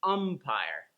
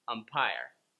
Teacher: The umpire sound... the 'uh' sound gets the stress: UMpire, instead of umPIRE.